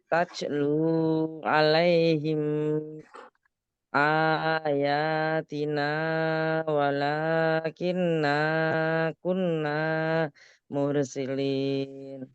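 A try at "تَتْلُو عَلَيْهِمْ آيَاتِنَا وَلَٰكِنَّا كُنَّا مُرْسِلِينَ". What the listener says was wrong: Ya, alhamdulillah.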